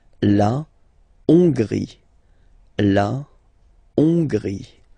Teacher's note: H doesn't exist, so you don't pronounce it. So it starts with O-N, on, on, and then gris, gris, final E, not pronounced.